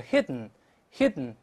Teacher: 鼻腔爆破，舌头不动了